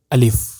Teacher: الف کو بالکل نرم آواز کے ساتھ جلدی ادا کرنا ہے، ایسے نہیں کرنا الف ایسے کر کے نہیں، بلکہ سمپل سا الف، الف نرم آواز، الف۔